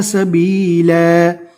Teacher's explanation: دو زبر رکنے کی حالت میں الف مدہ بن جائے گا